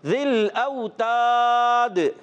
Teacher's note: زال کی ادائیگی کلیئر رکھنی ہے, زا سے نہیں بدلنا چاہیے